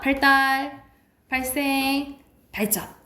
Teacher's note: 한자어일 때 자 이게 된 소리가 나는데 한자어 리을 뒤에 디귿 시옷 지읒이 된 소리가 나는 거예요